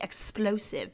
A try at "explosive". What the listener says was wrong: The explosive? Did you say explosive or exclusive? I didn't know if you said explosive. You said it weirdly that I wasn't sure what the word you were trying to say. It sounded like you combined exclusive and explosive, and you were like...